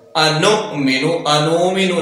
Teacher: اب یہاں حمزہ ہے، ساکن ہے، تو نون کو حمزہ کے ساتھ جب ملائیں گے تو جھٹکا پیدا ہوگا